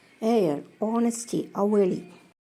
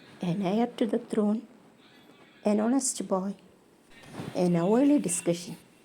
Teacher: all these words, air, honesty, hourly, all these words are voiced as though they begin with vowel